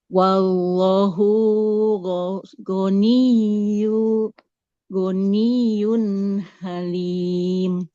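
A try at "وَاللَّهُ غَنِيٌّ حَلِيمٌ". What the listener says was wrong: Nah, nggak boleh wallahu. Jadi di lafadz Allah yang panjang lamnya bukan haknya ya. Wallahu. Wallahu ghaniyun halim.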